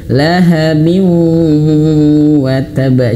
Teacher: Jadi bukan hanya sekedar memonyongkan bibir ya lahabiu ya bukan tapi juga masuk hidung. Ini yang keliru sekali. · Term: idgham bil ghunah